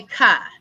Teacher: So if we say the sound for the K is k, we don't say ka, because when we say ka, we've added a vowel. We've added the U sound, the short U sound, which is a schwa.